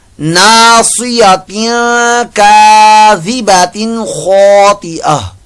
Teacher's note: नासियतिन यहाँ पर जो है वो इख्फा का कायदा लग रहा है, तनवीन के बाद काफ आ गया